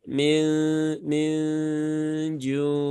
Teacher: minju Ya sambil mendengungkan ya bersiap untuk mengucap huruf berikutnya berarti lidahnya sudah diposisikan di mendekati tempat keluarnya huruf Jim yaitu di tengah lidah langit-langit atas